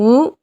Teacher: இதழ்களை குவிப்பதால் பிறக்கும் எழுத்து